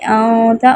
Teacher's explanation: غنہ، ناک میں آواز لے جانا